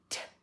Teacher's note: we don't do it that far forward it's a little bit back but it pops and with a t there's no vibration